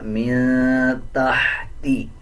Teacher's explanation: تا کے بعد ہا ہے، اس ہا کو باریک پڑھا جائے گا